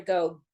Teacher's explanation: that g is a glottal stop it stops